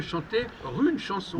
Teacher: le r apparaît quand il ya une voyelle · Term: liaison